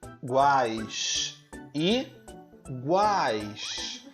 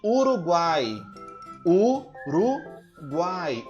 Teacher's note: O guai tem 3 sons de vogais, U, A e I, na mesma sílaba. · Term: tritongo